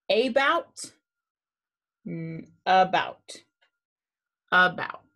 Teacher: but now we will need to say u comma a because a makes that uh the schwa sound when it is open but not accented so now for uh we will say u comma a u